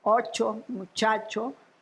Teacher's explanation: lo que en el centro de México se pronuncia ch o sea como africada prepalatal sorda